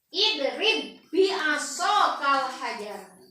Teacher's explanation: Macana sarua diidghamkeun ba anu kahiji paekeun asupkeun kana ba anu kadua sok sanajan ieu di barisan baris jabar tapi tetep ieu disebut idgham mutamatsilain kabiroini.